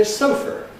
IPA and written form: ˈsoʊfɚ (sofa)